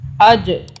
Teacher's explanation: جیم کو ہم طاقت سے پڑھیں گے، جھٹکے سے قلقلہ کریں گے جیم کے اوپر